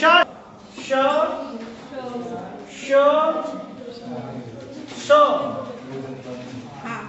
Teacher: उच्चारण करते समय जीभ तालु को स्पर्श करती है, इसीलिए इसको तालव्य कहते हैं।